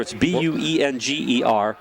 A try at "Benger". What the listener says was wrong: Benger. Benger. Forget the U. Benger.